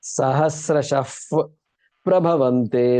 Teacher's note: Then the before the pa, you have to, the visarga gets converted to an F pronunciation